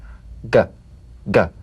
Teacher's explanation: You'll feel a crisp tap and a voiced pulsation of the back of the tongue. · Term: voiced tongue back plosive